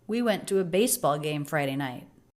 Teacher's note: I feel that base and night are the two most stressed words there